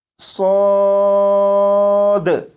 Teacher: اسے سواد نہیں پڑھیں گے، یعنی واو کی آواز کے ساتھ نہیں بلکہ الف کی آواز کے ساتھ